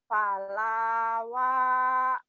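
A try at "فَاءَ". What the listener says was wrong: Bukan lam tapi alif. Pa'a.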